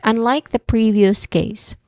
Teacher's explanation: First syllable pre is the stress syllable